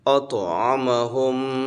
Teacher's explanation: الذی اطعمہم، غنہ کرنا ہے، طا موٹا پڑھنا ہے، اطعمہم، میم پر غنہ ہوگا، ناک میں آواز تھوڑی دیر رکنا